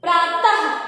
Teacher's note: प्रातः में भी तह पर विशेष बल पड़ रहा है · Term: बलाघात